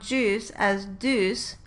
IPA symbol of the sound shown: dus